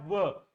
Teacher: व म्हणत असताना खालील जे ओठ आहेत तुमचे वरच्या दातांना जाऊन स्पर्श करतात म्हणून याला दंतोष्ठ वर्ण असं म्हणतात.